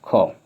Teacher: ख अघोष महाप्राण ध्वनि।